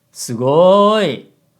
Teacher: the first syllable is actually lower than the third syllable. And with go, the pitch rises. But it doesn't matter semantically, so we just say low, high, low for convenience.